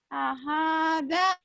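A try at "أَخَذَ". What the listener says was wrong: Pendek semua. Kho itu. Ada titiknya. Akhoda. Akhoda.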